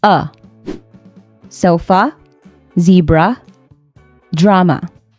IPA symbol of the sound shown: ə